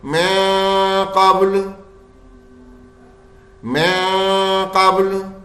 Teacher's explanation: ہمیں نون کی آواز کو چھپانا ہے، غنہ خالی کرنا ہے